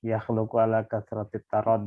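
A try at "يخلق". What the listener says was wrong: Bukan yakhluqu. La yakhlaku. Di sini bacanya yakhlaku, bukan yakhluku. Kalau yakhluku artinya kan menciptakan. Kalau yakhlaku artinya bukan menciptakan.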